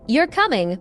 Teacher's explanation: If you say, "You're coming," with a flat tone, it sounds like a fact